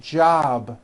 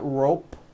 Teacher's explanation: It's not jop with an unvoiced P. Keep the voicing going throughout the whole word. Job with a voiced B ending.